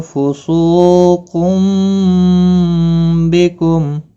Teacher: تنوین کے بعد متحرک با آیا ہے، یہاں پر قلب ہوگا، اخفا شفوی ہوگا، گنہ کے ساتھ پڑھیں گے